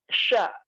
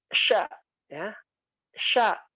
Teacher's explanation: sya itu dengan cara mengangkat lidah bagian tengah ke atas langit-langit. Diangkat. Jadi mulut mesti terbuka.